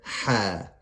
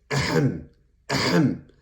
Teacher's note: Ha comes from the middle of the throat. It's like you're clearing your throat.